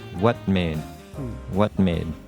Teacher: And the first one is that in the second part, what made, you don't pronounce the T as strongly. It's called a stopped T, and that's where you move to the T sound, but you don't do the final T. So it's just what made.